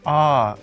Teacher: the third tone falls first and then rises